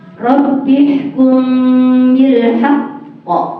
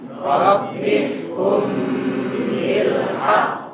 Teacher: membacakan huruf-huruf qalqalah bertasydid bila diwakafkan, ditekan suaranya, ditahan 2 harokat, diikuti qalqalah.